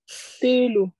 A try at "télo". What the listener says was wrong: Il y a le coup de gote à la fin, c'est pas l'eau.